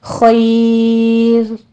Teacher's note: وقف مطلق ہے تو ہم جب را کو ساکن کریں گے ما قبل یا ساکن آ رہی ہے اس لیے ہم یہاں پہ را کو باریک پڑھیں گے